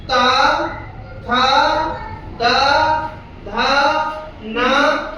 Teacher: अब आते हैं दंत वर्ण। ऐसे वर्ण जिनका उच्चारण में हम दांतों का प्रयोग करते हैं